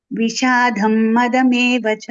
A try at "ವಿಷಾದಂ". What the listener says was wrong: ವಿಷಾದ್ ಧಂ ದೊಡ್ಡ ಮಹಾಪ್ರಾಣ ಇಲ್ಲ ಮಾತಾಜಿಯಲ್ಲಿ. ವಿಷಾದಂ